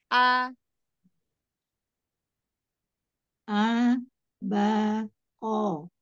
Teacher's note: Hamzah Hamzah dari tenggorokan bagian bawah